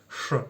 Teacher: le son ch, c'est un son sourd, ch. On n'utilise pas les cordes vocales.